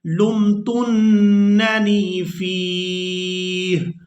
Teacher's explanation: नून मुशद्दद पर गुन्ना करेंगे